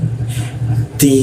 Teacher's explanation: Ujung lidah bertemu gigi dia ti.